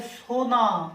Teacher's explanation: আকারের প্রভাবে হস্যকার পরিবর্তন হয়েছে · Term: পরাগত স্বরসঙ্গতি